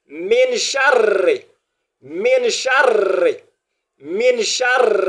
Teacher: Donc à cause de cette encore la présence de Tada, on doit avoir l'impression comme si le R est deux fois au cours de la lecture